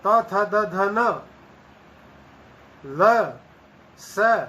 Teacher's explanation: तवर्ग त थ द ध न ल स इन सब ध्वनियों का उच्चारण स्थान दांत होते हैं, इसलिए इनको दंत्य कहा जाता है।